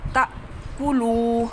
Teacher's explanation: ولا تأکلوا، اب یہ دیکھیں یہ الف جو ہے اس کے اوپر جزم پڑی ہوئی ہے، الف جزم والا حمزہ ہوتا ہے، اس کو ہلکے سے جھٹکے سے، جس سے ناف نہ ہلے اتنے جھٹکے سے آپ نے اس کو تا پڑھنا ہے